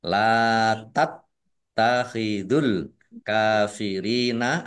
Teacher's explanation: Mat tobi'i dibaca panjang 2 harokat. Taknya dibaca double, ada tasdidnya. Ditekan biar tampak doublenya. Latat takhidul kafirina, alif lam komariah ditandai lamnya dibaca sukun.